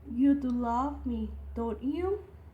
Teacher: Like, do you love? We use a higher pitch, and don't you? We use a lower pitch. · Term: intonation